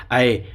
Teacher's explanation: कंठ तालु इन्हें बोल के देखेंगे तो कंठ और तालु दोनों काम करेंगे।